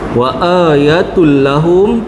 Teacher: Tanwin masuk dalam lam kat situ. Masuk tanpa dengung. Ya. Masuk jelas idgham bila ghunah.